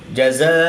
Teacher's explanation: کھڑی زبر کے بعد حمزہ اسی کلمے میں ہے تو یہاں پر مد متصل ہوگی، 3 سے 5 الف تک کھینچ کر پڑھیں گے